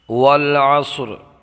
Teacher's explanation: عین کو برابر نکال کے پڑھیں گے، صاد کو موٹا پڑھیں گے، وقف میں را کو ساکن کر دیں گے، والعصری سے والعصر پڑھیں گے۔